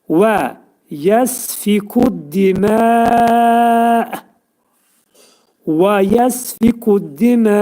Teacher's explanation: Və yəsfikud dimə, və yəsfikud dimə, və dediyimiz kimi dodaqlar qönçələnir, ə şəklində deyirik vavun məxrəcini